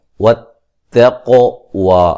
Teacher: بالبر والتقوی قاف کو موٹا ادا کریں گے اور قلقلہ ہے